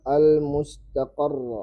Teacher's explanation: seperti suara dihentak menekan bacaan pada huruf sehingga menghasilkan suara lebih keras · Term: Nabar